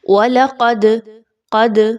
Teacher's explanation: دال کے اوپر جزم کی علامت ہے تو دال کو قلقلہ کرتے ہوئے پڑھیے، تھوڑا سا آواز کو ہلا کر پڑھیے، آواز کو روکنا نہیں ہے آپ نے۔